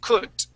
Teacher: your D sound at the end, you're pronouncing that D more like a T